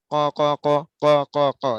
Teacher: 4 নম্বর মাখরাজ জিহ্বার গোড়া, তার বরাবর উপরের তালুর সঙ্গে লাগাইয়া।